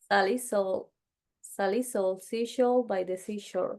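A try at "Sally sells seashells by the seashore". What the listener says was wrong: But you have to exaggerate the S, seashells. I don't know why, but what is specifically reason sometimes we say the singular instead of the plural. But yeah, you have to a little bit more.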